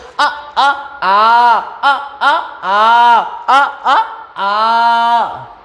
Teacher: बड़े आ में दो छोटे आ बेटा मिलकर बने हुए हैं